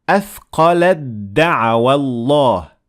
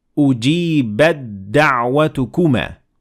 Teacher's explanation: We didn't pronounce the ta, we completely hid the ta, and we only focused on the dal because it came second.